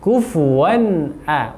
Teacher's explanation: wan a itu jelas tidak ada dengungan. Ahad memantul ya.